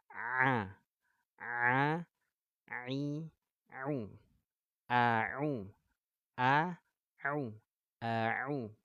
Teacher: katub epiklotis kita yang di tengah tenggorokan Ini dibenturkan disentuh dibenturkan ke dinding tenggorokan maka keluarlah bunyi Ain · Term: huruf Ain, huruf ain